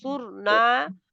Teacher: صاد را دونوں موٹے